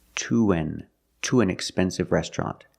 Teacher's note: N is the schwa sound, so we need that long oo to link the sounds